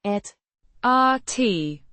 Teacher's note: with a short, open a, sound and a slightly softer t,